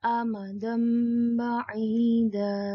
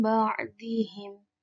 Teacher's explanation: Fathah tanwinnya ketika bertemu dengan ba maka menjadi mim. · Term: iqlab